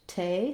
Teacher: This syllable is stressed, te, so I have a true T there. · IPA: /tʰ/